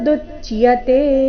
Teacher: ದು ಮೇಲೆ ಆಘಾತ ಕೊನೆಗೆ ತೆ ದೀರ್ಘ